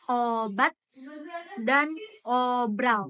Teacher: Vokal O ini tu bibir dimajukan dan bentuknya agak bundar